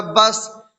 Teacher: سین میں قلقلہ نہیں ہوگا کیونکہ سین پر جزم تو ہے لیکن حروف قلقلہ میں سے نہیں ہے